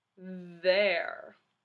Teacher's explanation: do you hear that Rumble and do you feel that Rumble there that means it is a voiced letter pair th in there is voiced